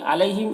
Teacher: یہاں پر یالین ہے، سے نرم آواز کے ساتھ جلد پڑھیں گے